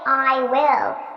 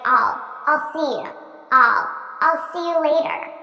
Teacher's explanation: notice how I'm actually saying all which is the unstressed pronunciation